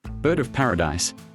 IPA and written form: ˌbɜːd əv ˈpær.ə.daɪs (Bird-of-paradise)